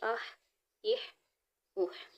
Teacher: یہ والا ہا جو ہے اس کو حلق کے درمیان والے حصے سے ادا کریں گے